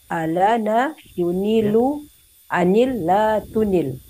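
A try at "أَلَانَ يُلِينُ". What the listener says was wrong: Terbalik hurufnya Ibu. Lam dulu bukan nun dulu. Ya, mohon maaf, bedakan nala dengan lana. Ini lana.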